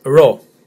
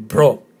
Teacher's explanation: slightly difficult to pronounce because it's a rolling 'r' so it's not a rounded 'r'